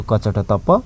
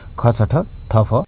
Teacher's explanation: अघोष यानि कि कम्पन कम भई आवाज आउने, थोरै थर्किने